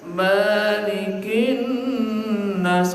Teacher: Kalau maliki di Al-Fatihah ma-nya panjang, ini pendek ya